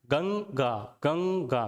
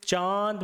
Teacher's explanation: गंगा में मुंह नहीं खुल रहा है, लेकिन चांद में मुंह खोलना पड़ रहा है।